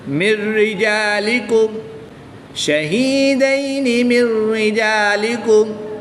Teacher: نون ساکن کو را مشدد میں شامل یعنی کہ مدغم کر کے پڑھیں گے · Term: ادغام بلا غنہ